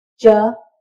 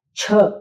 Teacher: तो आप देखेंगे च, छ, एक ही तरीके से जीभ और मुंह चल रहा है, एक ही तरीके से बोले जा रहे हैं, इनके उच्चारण स्थान तालु होता है। और च सामान्य बोला, छ उसमें हवा निकाली मोटी, छ आप हाथ पर हवा करके देखेंगे, ज झ झ के साथ हवा नहीं निकलेगी, झ के साथ हवा निकलेगी।